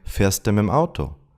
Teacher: the words mit dem often merge to mim